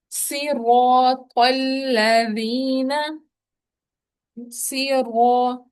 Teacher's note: سواد کو پور کرنا ہے، مگر زیر ہے تو گول نہیں کر دینا